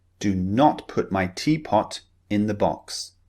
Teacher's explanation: the ah sound the very short vowel sound the lips remember are very slightly rounded